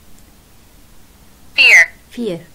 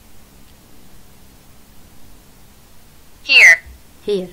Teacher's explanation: هاي الثنتين اصوات، واحدة ايه وواحدة شوا